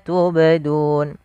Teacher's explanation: ini ada bacaan qalqalah pada lafal huruf ba yang dia sukun. Nah, di sini kita namakan dengan qalqalah sughra, yaitu qalqalah kecil.